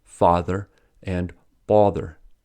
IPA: fɑːðə and bɒðə